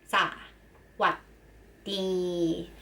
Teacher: สวัสดี have 3 syllables. The first 2 syllables is short. The last one is long.